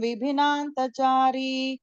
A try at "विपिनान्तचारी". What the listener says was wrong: விபில விபி பி போடாதீங்க, பி.